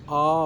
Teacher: आ में पूरा मुंह खुल जाता है, इसलिए वो कहता है आ।